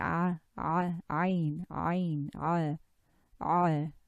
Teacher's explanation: So you move the tongue back towards the throat wall to produce Ain and Ha.